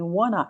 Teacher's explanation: Ele é escrito com 2 N's, mas eu só falo um som de N